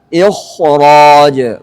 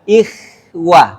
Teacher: harus dibaca tebal, sempurna ketebalannya. Alasannya kenapa? Karena ada huruf ra setelahnya yang dibaca tebal.